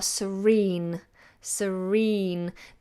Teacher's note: the letter after the R and the sound after the R is a vowel sound so we sound the R